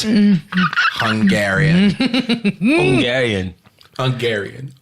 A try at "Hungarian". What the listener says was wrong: Nah, nigga, you can't pronounce the H in that. Hungarian.